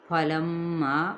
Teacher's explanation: غنہ کرتے ہوئے الف مدہ کریں گے، جس سے مراد ہے ایک الف یا دو حرکات